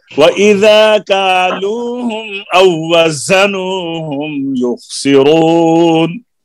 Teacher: زا میں صفت صفیر ہے، اس کو سخت کریں، سیٹی